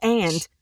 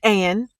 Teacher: I am going to drop the D because that is not how I say it to my friends